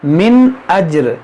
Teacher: نون ساکن کے بعد حمزہ ہے تو یہاں پر ہوگا اظہار